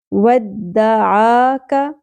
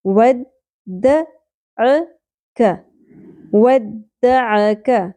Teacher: ودعک الگ الگ ایک ایک سنگل حرکات ہیں، آدھے الف کے برابر کھینچیں گے، زیادہ نہیں کھینچنا. ودعاک بھی نہیں پڑھنا، ودعکا بھی نہیں پڑھنا.